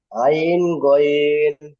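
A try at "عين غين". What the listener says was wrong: তিন আলিফ করে টান দেন, আইন গইন, তাড়াহুড়ো নয়, একদম আস্তে আস্তে পড়েন।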